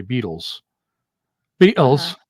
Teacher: The T is a glottal stop.